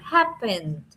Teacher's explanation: Pero resulta que la última sílaba no está acentuada, o sea que la fuerza se hace en la primera, la acentuación más grande es en la primera sílaba